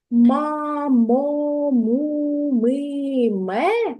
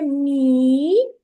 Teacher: твердим звук м роблять голосні звуки а о у е и а м'яким його робить тільки один голосний звук і Отже якщо ви чуєте ма мо му миме тоді звук м